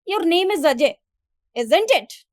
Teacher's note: When genuinely seeking confirmation, the voice generally rises at the end of the tag. · So you must have listened to me that when I said your name is Ajay, this in this sentence, while speaking this sentence, my tone was lower as compared to the question tag I have used